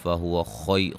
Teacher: خا کو موٹا، یا لین، اور را کو موٹا